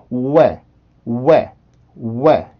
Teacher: 이 W라는 전이음은 아주 짧은 우의 느낌을 가지고 있습니다. 우. 그래서 전이음인 에 발음으로 이렇게 소리가 넘어오게 되면 왜, 왜 이런 식으로 소리가 만들어지는데 요 발음할 때 주의할 점은 절대로 소리가 끊기고서 에로 넘어와서는 안 됩니다.